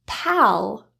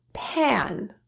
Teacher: listen to how the a sounds a little bit different in Pal versus pan this is due to the vum pulling down and anticipating for the nasal sound